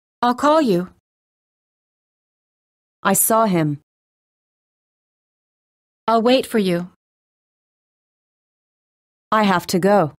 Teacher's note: Notice how the verbs are stressed the most and how the surrounding words have been reduced. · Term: Stress verbs